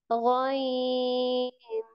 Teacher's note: जुबान की जड़ को तालु की तरफ बुलंद करते हुए मोटी आवाज में पढ़ेंगे